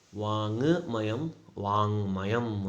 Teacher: ಕ ವರ್ಗದ ಅನುನಾಸಿಕ ಅಕ್ಷರ ङ ಎಂಬುದು ಆದೇಶವಾಗಿ ಬರುತ್ತದೆ. ವಾಕ್ ಇದ್ದಿದ್ದು ಹೋಗಿ ವಾಂಗ್ ಆಗುತ್ತೆ.